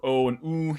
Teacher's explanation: So the mid vowels should be a little bit more intense than the high vowels, and then the unrounded vowels should be a little bit more intense than the rounded vowels, because in addition to sort of closing your jaw a bit more for O and oo, you also round your lips for them as well, right? So the opening or the aperture of your mouth is going to be even smaller or tighter if you're rounding your lips, especially for an oo.